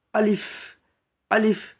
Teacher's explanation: আলিফে কোনো টান হবে না, আলিফটা হবে দুটো ঠোঁটের মিডিল থেকে বেরিয়ে যাবে। আলিফ, আলিফ, আলিফ, একদম স্পিডে পড়তে হবে, কোনো টান হবে না।